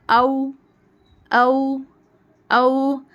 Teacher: वाऊ जब हम पढ़ेंगे ना तो हमारे दोनों होठ गोल हो जाने चाहिए कली की तरह वाओ जैसे हम इंग्लिश में कोई चीज को देखकर एक्साइटेड होते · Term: वाव